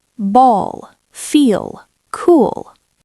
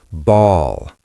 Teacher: We don't touch the teeth as much. The sound comes from the back of the throat. It is a deep guttural sound. Ball. Your tongue pulls back. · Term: dark L